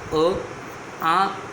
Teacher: ये है कंठ और कंठ के माध्यम से उच्चार अ, आ तथा क वर्ग और अवर्गीय व्यंजन ह